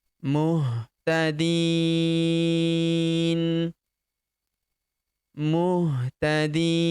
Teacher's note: Kenapa kita panjangkan 4 sampai 6 harokat? Karena di depan huruf di terdapat ya sukun sebelum huruf berhenti, dan huruf berhenti di sini huruf na kita sukunkan atau kita matikan.